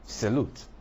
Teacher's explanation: there's a schwa in the first syllable. That's why the stress is on the 2nd syllable.